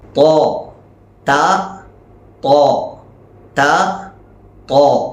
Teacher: ത എന്ന് പറയുന്ന അതേ മഖ്റജ് തന്നെയാണ് ത്വാ എന്നതും. എന്നാൽ ത്വാ പറയുമ്പോൾ തഫ്ഹീമാക്കി വായ നിറഞ്ഞതായ രൂപത്തിൽ നാവിൻ്റെ മധ്യഭാഗം പൊങ്ങി ആ ഒരു രൂപത്തിലാണ് ഉച്ചരിക്കേണ്ടത്. ത്വാ ത ത്വാ ത ത്വാ, ഇതാണ് വ്യത്യാസം.